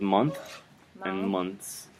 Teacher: you can kind of get by saying month, pronouncing the th, and then months, almost not saying the th, but it's in there.